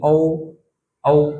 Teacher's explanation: ओ, sorry, औ, औ, देखो पूरा मुंह नहीं कहीं खुल रहा, मुंह गोल हो रहा है लेकिन पूरा नहीं खुल रहा है। आ, तो देखो इसमें भी पूरा मुंह नहीं खुल रहा है, केवल बड़ा ऐसा है जिसमें पूरा मुंह था आ। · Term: अर्ध विवृत